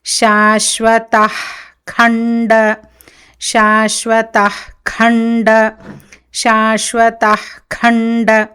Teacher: శాశ్వతః ఖండపరశు, ఖండ ఖా మహాప్రాణ, శాశ్వత అక్కడ విసర్గ జిహ్వామూలీయం అవుతుంది. జిహ్వ యొక్క మూలం నుంచి, నాలిక యొక్క మూల భాగం అక్కడి నుంచి విసర్గ ఉచ్చారణం జరుగుతుంది.